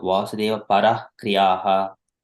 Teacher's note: So we have to stress ha at the end. Sometimes when we are doing it regularly, we forget the ha because it would give the vibrations to all parts of the throat and the mouth muscles. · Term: Visarga